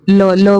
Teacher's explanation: तो उच्चारण स्थान ल बोल के देखिए, तो ल का उच्चारण स्थान तालव्य से है।